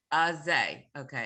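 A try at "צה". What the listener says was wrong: No, not say. No, it's not say. It's not a zion. It's a tzadi. Say.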